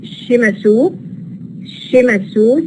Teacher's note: Again, if you look at Japanese, again, it's E sound. So sa becomes a sha before the E sound.